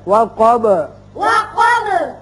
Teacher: اب با بھی حروف قلقلہ میں سے ہے، اس کی صفت قلقلہ ادا کریں گے۔